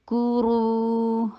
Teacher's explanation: لذ کو، کاف کے پر دمہ، کاف کو لائٹ رکھیے، دمہ کے لیے ہونٹوں کو گول کیجیے۔ کورو، را کو ہیوی کیجیے، را جب بھی دمہ یا فتح آئے گا را ہیوی ہوگا۔ رو، یہ ہیوی کرنا ہے، رو نہیں کہنا، کورو نہیں ہے، کورو۔